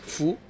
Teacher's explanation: I don't say too much of the H like hu, but I also don't say too much of the F, so it sounds like fu.